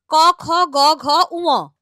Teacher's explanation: এদের উচ্চারণ স্থান কণ্ঠ, সেই হিসেবে এদের নাম কণ্ঠ ব্যঞ্জন